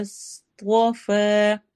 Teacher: صاد موٹا، طوا موٹا